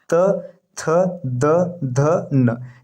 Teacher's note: त थ द ध न ये दंत होता है